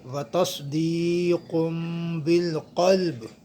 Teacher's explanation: وتصدیق بالقلب، یہاں پہ نون تنوین ہے، اور نون ساکن نون تنوین کے بعد جب حرف با آ جائے تو نون ساکن اور نون تنوین کو میم سے بدل دیتے ہیں، میم سے بدل دیتے ہیں، لہٰذا جو ہے ہم اسے پڑھیں گے وتصدیق بالقلب، قاف قلم والا ہے، آواز بھاری آئے گی، تو ہم نے با کو ساکن کیا ہے، یہاں پہ قلقلہ ہوگا، بالقلب۔